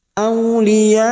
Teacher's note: ada Mad yang bertemu dengan Hamzah dalam satu kalimat namanya mad wajib muttasil lima harakat kita panjangkan